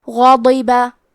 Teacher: کلمت غاضبہ میں حرف الغین کو موٹی آواز میں پڑھیں گے. ضاد کی ادائیگی زبان کے کروٹ اور اوپر کے داڑھوں کے جڑ سے ہے. ضاد حروف تفخیم میں سے ہے تو ہم حرف الضاد کو بھاری آواز میں پڑھیں گے، اور کیونکہ اس کے نیچے زیر ہے تو ہمیں زیر کو ظاہر کرنا ہے.